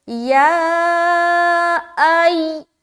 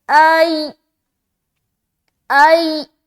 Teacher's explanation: اس حمزہ کو یا سے جب ملائیں گے تو ایک سختی والی آواز نکل کر آئے گی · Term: تشدید